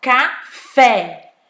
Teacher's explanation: É uma sílaba, a sílaba tônica tá na última, então ela é uma oxítona